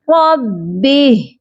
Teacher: ہم نے ہا کو ساکن کرنا ہے اور کھڑی زیر نہیں پڑھی جائے گی، یہ پڑھا جائے گا ربہ۔